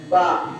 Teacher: दोनों होठों के करीब ऐसा, दोनों होठ मिल रहे हैं ना। अगर ये दोनों होठ मिलाए बगैर बा निकालो, निकलेगा नहीं · बा का मखरज दोनों होंठ मिलते हैं